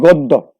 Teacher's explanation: তেমনি যদি বলি গদ্য, গ দয় জফলা, সুতরাং দয়ের সাথে জফলা থাকা এখানে দ কিন্তু দুইবার উচ্চারিত হবে। এখানে আমরা দেখব গয় ওকার, দ এবং দয় ওকার, গদ্য।